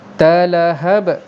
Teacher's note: qalqalah kubra, sebab huruf ba duduk di hujung bacaan kita, di hujung perkataan kita, dan dia bukan bersabdu.